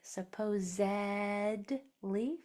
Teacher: This S is making more of a vibrating sound. And that's common if it comes after a vibrating sound.